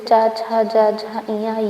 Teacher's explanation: इस वर्ण के सभी ध्वनियों का उच्चारण जिहवा का मध्य भाग तालु से स्पर्श करता है। उन्हें तालव्य कहते हैं।